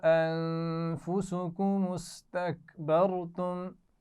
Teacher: انفسکم کی نون پر غنہ بھی ہے اور استکبرتم میں را کو موٹا پڑھنا ہے